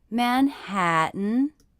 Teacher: again my voice went up at the end